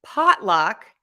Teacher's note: ah and you have to stress pot that's the key here stress pot and then luck is unstressed so that's shorter pot is longer luck is shorter pot is louder